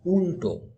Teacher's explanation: কিন্তু যখন তুমি উল্টো উচ্চারণ করছো তখনই দেখো এই লটা উচ্চারণ করতে গেলে জিভটা আমাদের মূর্ধাকে স্পর্শ করছে